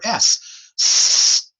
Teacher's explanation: hold your fingers to your throat and say the letter s didn't vibrate did it